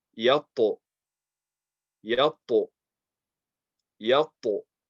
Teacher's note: So again, the ta, the makhraj is the tip of the tongue touching between the gums and the teeth